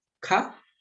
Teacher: You have the Mahaprana Kha with the Ha sound.